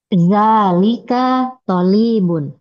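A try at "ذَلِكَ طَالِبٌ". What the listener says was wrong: Tolibun, bukan linya yang panjang. Tolibun. Tolibun.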